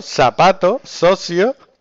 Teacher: Dice, seseo. Consiste en pronunciar el sonido Z como S.